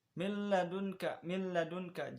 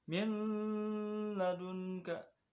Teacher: idgham bila gunah, yaitu idgham tanpa dengung. Hurufnya ada dua, lam dan ro.